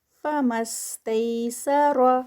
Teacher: را پھر ہیوی ہوگا زبر کے ساتھ ہے